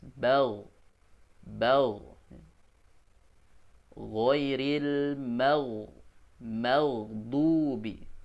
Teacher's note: Yang berikutnya di tenggorokan paling atas ada dua huruf juga ya, yaitu yang pertama ghain atau gho, bal ya. Ketika kita baca ghain disukunkan, maka terasa dia tekanannya atau makhrajnya ada di tenggorokan paling atas.